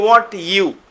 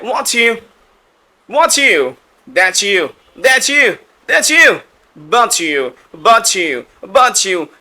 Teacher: টি এর পরে যদি ওয়াই আসে তাহলে টি এবং ওয়াই মিলে চ হয়ে যায়। এটা নেটিভরা চ উচ্চারণ করে।